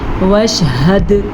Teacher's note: جیسے کہ ہم نے اس کو وش ایسے نہیں پڑھا، شین پہ قلقلہ جو نہیں ہے، ٹھیک ہے، دال پہ قلقلہ تھا اس لیے ہم نے اس کو جھٹکے کے ساتھ پڑھا